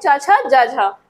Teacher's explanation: तालव्य, जो तालु से बोले जाते हैं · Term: तालव्य व्यंजन